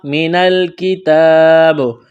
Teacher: یہاں جب وقف کریں گے تو با کو ساکن کریں گے، با پر قلقلہ کریں گے